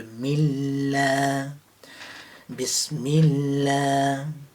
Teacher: The lam has a shadda, so it takes the kasra of the mim very quickly.